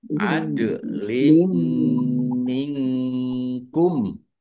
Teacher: Zawa adlim minkum wawu fathah alif mat tobi'i panjang 2 harokat dal sukun bacaan kolkolah dipantulkan ya dan ditampakkan pantulannya